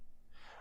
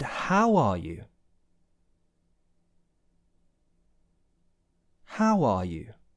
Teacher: sometimes you might stress the word how first of all in this kind of situation